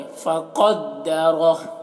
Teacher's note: क़ाफ को मोटा करके, रॉ को भी मोटा करके